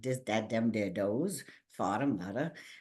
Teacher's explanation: in our region, we tend to substitute D for TH